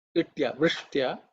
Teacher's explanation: just to make sure that ish is cerebral ish